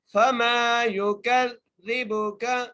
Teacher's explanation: اگلی عید پڑھتے ہیں، فما یکذبک، فا کے اوپر زبر ہے، میم کو ایک الف مقدار کھینچ کے پڑھنا ہے، یا کے اوپر پیش ہے، کاف کو ذال سے ملا کر پڑھنا ہے اور مضبوطی سے ملانا ہے، ذال کو نرمی سے پڑھنا ہے